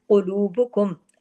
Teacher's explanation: अब काफ हैवी है, बाकी तमाम बारीक है।